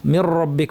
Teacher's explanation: গোলে যখন আওয়াজটা আসবে তখন একটু একটু কম্পন হবে জিহ্বার আর পিছনটা উঠে আছে মানে আওয়াজটাকে উপরের দিকে ঠেলে দিচ্ছি কারণ এটা ভারী র